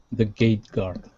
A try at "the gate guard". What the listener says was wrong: Yes, good. One more time.